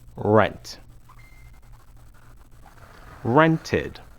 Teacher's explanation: The pronunciation id adds an extra syllable to the verb.